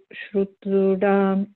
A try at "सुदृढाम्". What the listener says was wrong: Yeah, just be careful. You're saying it as shudrudam. It is not shudrudam. It's sudrudam. So it's just an S, not sh.